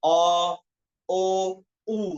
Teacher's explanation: তাহলে নিচ থেকে আস্তে আস্তে উপরে চলে গেল দেখেন, কারণ এগুলো গোল হয় যেহেতু, গোলের গুলার স্থান কোথায়, পিছনে।